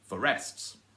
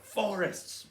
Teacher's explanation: you put the stress on the first syllable and not on the second syllable and then same thing the same rule applies to walk to